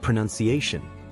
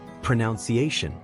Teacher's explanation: The word pronunciation comes from the verb pronounce, but it drops the OU sound when turned into a noun.